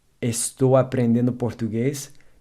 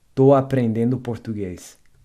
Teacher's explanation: the es in all forms of estar are almost never pronounced. So I'm learning Portuguese, estou aprendendo português becomes tô aprendendo português.